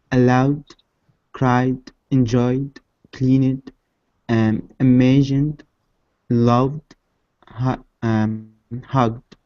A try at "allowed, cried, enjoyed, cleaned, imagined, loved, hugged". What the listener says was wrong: Now, your pronunciation was very good, okay?